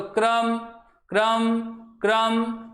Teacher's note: तो क पे कम और रे पे क्या पड़ रहा है, ज्यादा जोर पड़ रहा है। जिस पे ज्यादा जोर पड़े उसका मतलब वह क्या है, स्वर युक्त है, क्योंकि बिना स्वर की सहायता से हम किसी भी व्यंजन का उच्चारण नहीं कर सकते हैं।